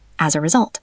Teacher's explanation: As a result, it flows together almost like one word.